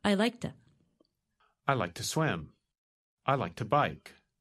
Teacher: When we say it quickly, the word to is pronounced ta.